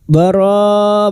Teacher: Mad wajib mutasil 5 harokat kita panjangkan